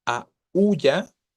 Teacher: Entre la A y la U, la tónica efectivamente es la débil. O sea, hay un hiato, ¿no?